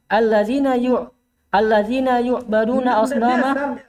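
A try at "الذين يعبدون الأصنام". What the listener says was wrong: Baca biasa. Jangan dikasih majhul.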